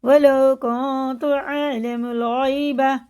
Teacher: یا ساکن سے پہلے زبر ہے، حرف لین ہے، جلدی پڑھیں گے